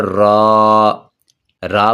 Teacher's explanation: را پر جب زبر اور پیش ہو اسے موٹا پڑھا جاتا ہے، اور زیر ہو تو اسے باریک پڑھا جاتا ہے۔